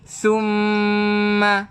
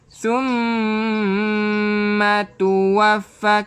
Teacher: Summa, dengungkan 2 harakat. Ma tu tak perlu panjang. Yang panjangnya dekat dengung.